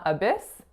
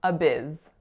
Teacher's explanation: the vowel is a really lax I sound, and it's going into a voiced z.